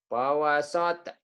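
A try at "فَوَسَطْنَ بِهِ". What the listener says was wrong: Sinnya biasa aja, sate ayam. Sate susu.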